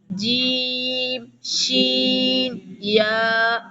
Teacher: جیم، زبان کا درمیان اور اس کے مقابل تالو کے ملاپ سے۔